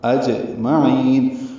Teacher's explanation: جیم ساکن اس پہ قلقلہ